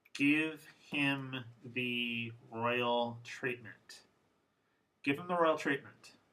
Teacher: So you can see that the H's disappear quite a bit